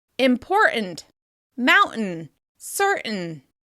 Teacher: Let's look at the glottalization of the t sound when it appears before an unstressed un sound. When saying words like important, mountain, and certain, we often change the t sound to a glottal stop.